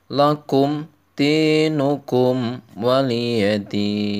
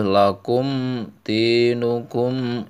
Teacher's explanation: lakum di kum wa itu harus jelas, nggak boleh berdengung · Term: idhar syafawi